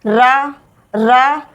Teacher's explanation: रा के उच्चारण में जीभ कंपन करती है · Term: प्रकंपित व्यंजन